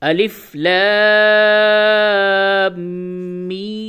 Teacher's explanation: यह मद जो है ये मदे लाजिम है तो इसको खींच करके पढ़ें ज्यादा खींचेंगे